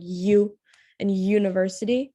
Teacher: the tongue is pressing up against the top middle of your mouth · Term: palatal consonants